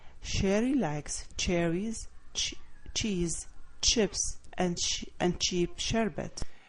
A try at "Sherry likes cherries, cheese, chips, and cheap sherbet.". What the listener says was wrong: Very good on your tone there. You're paying attention. So you got rise, rise, rise, and then fall. Exactly.